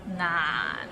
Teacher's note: So it starts with n and ends with another n. 難 and it's in a low tone